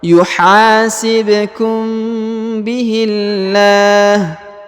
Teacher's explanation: huruf mim sukun bertemu dengan ba maka ditahan dan ditekan dua harakat ya didengungkan dua harakat